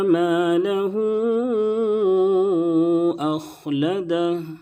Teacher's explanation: مالہ، الف سے پہلے صبر ہے، الف مدہ ہوگا، اس کو ایک الف کے برابر کھینچیں گے اور ہا کے اوپر الٹا پیش ہے، الٹا پیش واو مدہ کے برابر ہوتا ہے اور اس کے بعد حمزہ دوسرے کلمہ میں ہے، اس لیے مد منفصل ہوگا، 2 الف یا 2.5 الف کھینچیں گے